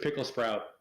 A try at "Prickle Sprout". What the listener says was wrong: Hey, it's Prickle Sprout, not Pickle.